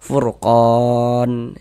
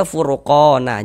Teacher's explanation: Ini kalau kita berwakaf, berhenti kita di huruf nun, ya, memutus bacaan di huruf nun untuk mengambil napas, maka kita baca furqon.